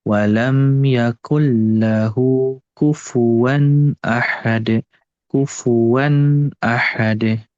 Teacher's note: idghamnya bila gunnah, maka jangan ditahan. Tapi cukup kita alirkan atau ayunkan saja. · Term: idgham bila gunnah